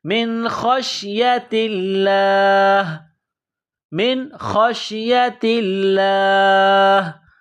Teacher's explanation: ہے، لام کے اوپر تشدید ہے، لام میں سختی کرنی ہے، لفظ اللہ کے نام سے پہلے زیر ہے تو لفظ اللہ کو باریک کرنا ہے